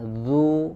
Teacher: Ulangi ya, kemudian dzu ya, ya dimanyunkan, kemudian dzu juga dhammah lagi, huruf dzal dhammah, kemudian tempat keluar hurufnya adalah dari ujung lidah bertemu dengan ujung gigi seri bagian atas